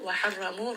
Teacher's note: ra in this case is heavy because of the fatha